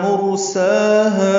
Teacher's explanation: سا کھڑا زبر اور ہا الف مدہ مد اصلی، 2 حرکات دونوں کو لمبا کریں گے وقفاً وصلاً.